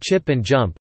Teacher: the sounds [tʃ] [dʒ], as in chip and jump, are affricates